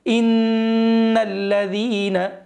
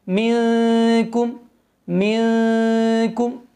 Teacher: غنہ اور اخفاء میں فرق یہ ہے کہ غنے میں سختی ہوتی ہے، جیسے ان الذین، اب یہاں پہ سختی ہو رہی ہے، اور اخفاء میں نرمی ہوتی ہے، منکم، منکم، تو یہ غنہ اور اخفاء میں فرق تھا۔